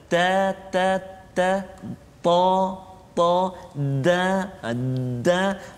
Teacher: Lidah kita tu, hujung lidah diangkat menekan siratan gusi ni yang mengikat gigi.